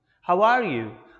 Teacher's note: i'm using a rising and falling tone